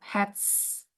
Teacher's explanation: Nah, ketika Anda punya kata, ada ending S-nya, but it is preceded by voiceless consonant sound, the pronunciation of S will be S. Jadi cara bacanya tetap hats.